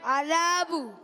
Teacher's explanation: عذابو میں ذال کو زا سے نہیں بدلنا